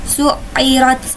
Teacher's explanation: ra-nya yaitu ra tafhim karena berharokat zummah maka harus dibaca dengan tebal